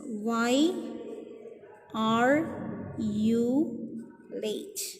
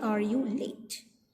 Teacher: WH question, normally it is a falling tone.